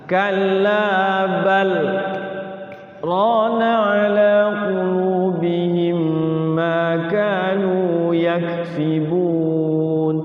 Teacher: Sakta, berhenti sejenak, sekedar 1 alif tanpa bernapas